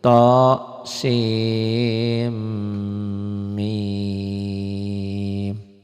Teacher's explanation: tho sin n-nya masuk ke m sim jangan sin ujungnya jangan n lag sim bibitnya dikatup sim mim tuh ini ya mim ah ini ke sini tuh ya tho sin eh ujungnya nun mati ketemu mim idgam